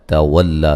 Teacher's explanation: تا کو باریک پڑھیں گے